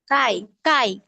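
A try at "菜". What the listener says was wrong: সাই। ছ, হ্যাঁ বাংলার ছ আকার রস্বই, সাই। না, কাই না, এটা হবে ছাই। আমরা সি এর উচ্চারণ কি শিখলাম আজকে ক্লাসের শুরুতে? সি হবে সি সি। এটা হচ্ছে যে আমাদের জিহ্বার আগাটা উপরের দাঁতের পাটির সাথে লেগে উচ্চারণ হবে স, ছাই।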